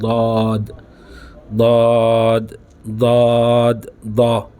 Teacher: زبان کا درمیان کا حصہ اوپر کے تالو کے ساتھ منہ بھر کر ادا ہوتا ہے